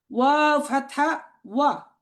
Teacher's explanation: এটা সবাই একটু ঠোঁট গোল করে উচ্চারণ করতে হবে